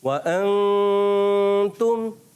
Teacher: مگر ہم یہ نہیں کہیں گے کہ کسی نے بہت بڑی غلطی کی ہے, کیونکہ نون کا غنہ تو ہو رہا ہے اس میں بھی, ٹھیک ہے نا, مگر کیا نون بہت زیادہ ظاہر ہو کے ہو رہا ہے, تو ظاہر نہیں کرنا, نون کو چھپا کے ادا کرنا ہے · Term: اخفا